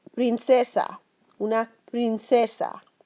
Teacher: P, just like the English P, but softer. Your lips shouldn't really separate a lot.